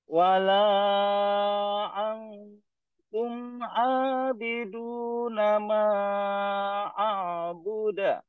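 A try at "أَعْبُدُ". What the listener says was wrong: Ah, bukan a'buda. Ke bunyi A'budu. De. A'budu.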